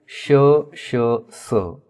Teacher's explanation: घर्षक आहेत श स यांना उष्मे किंवा घर्षक का म्हणतात कारण ज्यावेळेस आपण यांचा उच्चार करत असतो त्यावेळेस गळ्यामध्ये घर्षण होतं आणि तो भाग उष्ण होतो किंवा तो गरम होतो असं म्हणायला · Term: ऊष्मे किंवा घर्षक